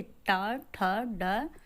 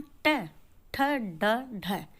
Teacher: तालु और होठों के बीच का जो भाग, कठोर जो भाग होता है वहाँ पर जब जिह्वा लगती है तो इन ध्वनियों का उच्चारण होता है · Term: मूर्धा